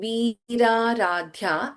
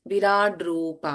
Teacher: the first ಲೆಟರ್ವಿ ಇಸ್ ದೀರ್ಘ in the second ವರ್ಡ್ the first letter ವಿ ಹಿಯರ್ is ಹರಸ್ವ